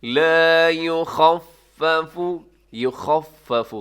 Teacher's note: لا یخفف، یخفف، خا کا ساؤنڈ ہے، خا جو ہے وہ حروف حلقی ہے، خا کی آواز ایسے ہوتی ہے جیسے خراٹے لیے جاتے ہیں، اپنے خراٹے تو ہم نہیں سن سکتے لیکن دوسروں کے خراٹے سن کر ہمیں آئیڈیا ہو سکتا ہے کہ بھئی خا جو ہے وہ اس طریقے سے آ رہا ہوتا ہے۔